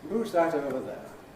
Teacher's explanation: So the technical name for the intonation pattern we have here is a Stepping Head and a Low Fall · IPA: ˈhuːz ˈðæt ˈəʊvə ˎ_ðeə_